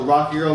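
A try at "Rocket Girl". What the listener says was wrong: sounds like you're saying Rocky Girl.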